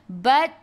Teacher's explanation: ta sifat hurufnya hamas kena ada sedikit sahaja angin, jangan banyak